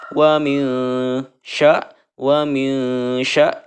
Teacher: Cara membacanya itu membunyikan serta dengung ya, atau dibacanya samar antara idhar dan idgham ya. Ditahan selama 2 harokat. Wa min sya seperti itu ya, karena di sini nun bertemu dengan shin, namanya ikhfa.